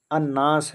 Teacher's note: یہاں پر بھی دیکھو، الناس ہے تو الف لام نون ہے لیکن لام سائلنٹ ہو گیا اور نون کے اوپر تشدید آ گیا